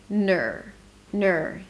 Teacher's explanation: from the N, I shift directly to the R. My tongue pulls back to the R. My lips round as I pronounce the N.